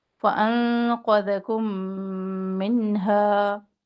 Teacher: میم ساکن کے بعد میم ادغام کر رہے ہیں ادغام شفوی